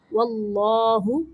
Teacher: اللہ کے لام موٹا پڑھیں گے